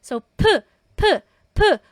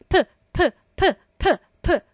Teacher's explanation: This one po talagang aspirated. Sobrang breathy niya. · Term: piyup